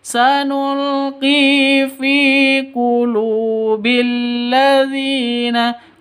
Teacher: qi dibaca panjang dua ketukan karena ada ya mati diawali dengan kasrah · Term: mad asli